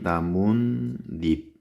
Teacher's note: 나뭇잎 같은 경우는 나무 플러스 잎 발음이 나뭇잎 니은 소리가 니은이 두 번 겹쳐서 소리가 덧나고 있죠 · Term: 사이소리 현상